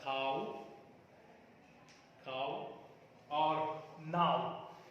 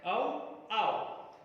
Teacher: a glide from front and rounded vowel just above open position to the back rounded vowel just above half closed position